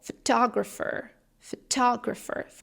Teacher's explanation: The second syllable, photographer, is emphasized, it's stressed, and you have to focus on that.